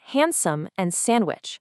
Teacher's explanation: We say handsome and sandwich. The D just completely vanishes.